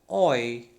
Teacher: Third one, okay, gliding towards E. This is O is gliding towards E. So that's why it has become oi. Oi, lips are rounded.